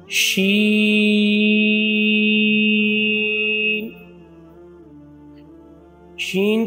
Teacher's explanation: جیسا کہ ہم نے جیم کے مخارج کو دیکھا تھا، شین کا بھی مخارج یا مخرج وہی ہوگا جو جیم کا تھا۔ شین کو پڑھتے وقت وسط زبان جب بالمقابل اوپر کے تالو سے لگے تو اس سے شین ادا ہوتا ہے